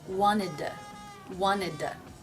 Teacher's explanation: The first D at the end of wanted is a stop. Wanted, d. Then I'm pronouncing to with the flap T schwa sound.